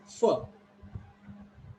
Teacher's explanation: Your lower lip touches to upper teeth, not upper lip.